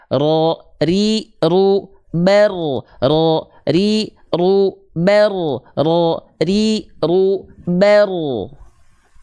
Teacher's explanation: Huruf ro itu cukup digetarkan sedikit saja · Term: takrir